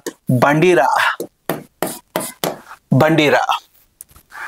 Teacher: నాలిక యొక్క కొన దంత మూలాన్ని కంపింప చేసినప్పుడు జరిగినటువంటి ప్రయత్నాన్ని కంపిత ప్రయత్నం అని అంటారు. కంపింప చేయడం అంటే ఇట్లా తాకినప్పుడు షేక్ చేయడం అన్నమాట.